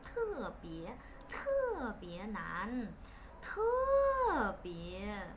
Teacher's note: chữ tờ trong tiếng Hoa của họ thì phải bật hơi, nó là chữ thờ giống như chữ thờ trong tiếng Việt ấy